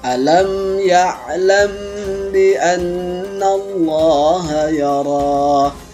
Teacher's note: setelah terjadi pertemuannya mim mati dengan ba ini dinamakan ikhfa syafawi.